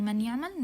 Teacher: we merge the noon into the ya and add a shadda here on the here. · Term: merging